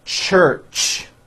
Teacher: When you put these 2 sounds together, you get a ch, ch. It's an unvoiced sound, and you can hear the sound, for example, at the beginning and at the end of the word church.